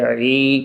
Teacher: فَأَمَّا مَنْ ثَقُلَتْ مَوَازِينُهُ فَهُوَ فِي عِيشَةٍ راضِيَةٍ، فَهُوَ، یہ تینوں حرف جلدی سے پڑھنے ہیں، فی کو تھوڑا سا کھینچ کے پڑھنا ہے، عی کو بھی تھوڑا سا کھینچ کر پڑھنا ہے، اور عین کی آواز حلق کے درمیان سے عی کر کے، ای نہیں کہنا، عی کہنا، عی آواز دبا کے تھوڑی سی پریکٹس کریں، انشاءاللہ العزیز آئے گا، بالکل آئے گا۔